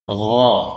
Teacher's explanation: Gha lebih ke bawah, lebih dalam.